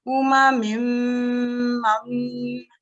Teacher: There's the next meme, which is also a shadda, but between them, you can see there's a nun sakin. What happens when you see a nun sakin and a meme mushaddad? The nun sakin is always dropped. So in this case, we drop the nun sakin.